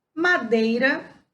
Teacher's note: na palavra madeira, o E também tem o som mais forte que o I. Por isso o E é chamado de vogal e o I semivogal.